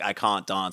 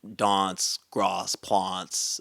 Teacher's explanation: in South Australian English, they do not have as pronounced a trap bath split.